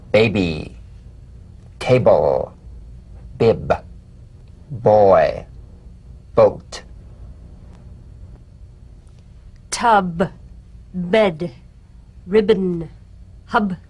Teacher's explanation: you'll feel a gentle voiced pulsation on the lips